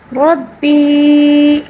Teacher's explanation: ربی یہاں پر وہ مد منفصل ہے، اس کو 3 الف کے برابر کھینچنا ہوگا